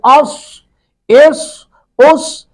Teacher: اب صاد پر بھی سٹی کی آواز آئے گی لیکن موٹا ہوگا، منہ کے اندر اس کو گول کریں گے۔